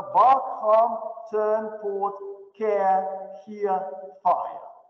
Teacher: «р» растворяется, как шипучая таблетка, и получается «а» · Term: Вокализация «р»